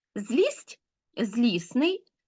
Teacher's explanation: пари слів зробімо Висновок про те у яких групах приголосних відбувається спрощення тобто випадання одного з приголосних Д або Т